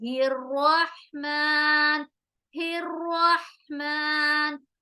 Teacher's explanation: را کو موٹا کریں گے کیونکہ را زبر ہو رہا ہے